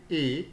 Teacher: When we talk about the position of the lips, obviously when we say A, it is unrounded, they are little bit spread. Hence, A will be front unrounded vowel between half close and half open position.